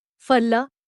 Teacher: The consonant fa requires some annotation because even most native users of Devanagari have lost the correct pronunciation and pronounce it like the fa in fun. But the Indian fa is supposed to be pronounced not with the lower lip tucked under the upper teeth, but with both lips coming together. It should be closer to few than few, as used in falla, meaning fruit.